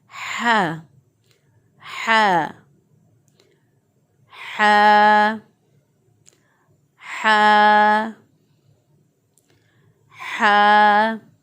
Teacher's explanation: हा को गले के दरमियान से निकालना है, वस्ते हलक से निकालना है, गले के दरमियान से निकालना है।